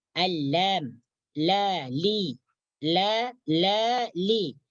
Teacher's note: tepi ujung lidah melewati bawah lidah Ilham Laili Laili dapat rasakan ketika kita mengucapkan huruf lam maka dia akan keluar dari tepi bagian lidah